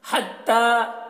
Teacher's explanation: ता में खड़ा ज़बर है, इसे एक अलिफ के बराबर खींच कर पढ़ेंगे